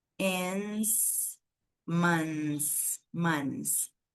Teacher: você sai do som do n e passa para o som do s